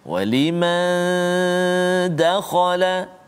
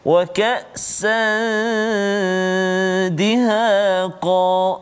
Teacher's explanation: nun mati bertemu dengan dal, dengung dua harakat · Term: ikhfa hakiki